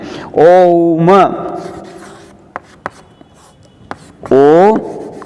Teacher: प्लुत मात्रा है। इसको मतलब ओ को 3 टाइम तक बोला जाता है